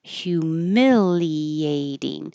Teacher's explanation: The humiliating. This T changes to a D.